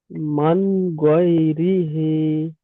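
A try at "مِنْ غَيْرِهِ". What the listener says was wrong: মিমের নিচে জের আছে। মিন জের মিন, মিম নুন জের মিন,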